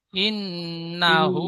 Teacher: হা উল্টা পেশ হু এক টান হবে